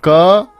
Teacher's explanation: क वर्ग जो होता है वो आवाज को रोक के छोड़ता है, तो वो स्टॉप हो गया, इनकी आवाज को रोकता है।